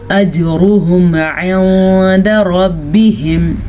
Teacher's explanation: اجرہم عند ربہم، را کو پر پڑھنا ہے، جیم پہ کلکلا کرنا ہے، ہا کا دھیان رکھنا ہے، نون ساکن کے بعد دال ہے تو اخفا ضرور کرنا ہے